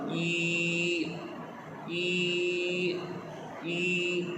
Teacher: When your lips move now make एन ई sound. You feel your lips come back to be flat against your teeth.